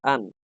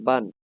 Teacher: তানবিন উচ্চারিত হবে লাস্টে একটা নুন যুক্ত করে।